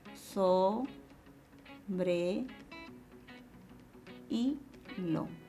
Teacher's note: la vocal cerrada y la vocal abierta se separan porque el acento está en la segunda vocal.